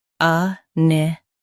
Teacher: Both US and UK have the same pronunciation of this word. Stress ni. Keep qu soft, then t clear.